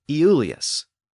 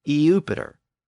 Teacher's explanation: Well, that name was originally pronounced Iulius, but when an I precedes another vowel, it tends to slur into the Y sound. So Iulius eventually came to be pronounced Julius.